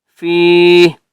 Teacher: فا کو بھی ہم نے 1 الف کی مقدار کھینچ کر پڑھنا ہے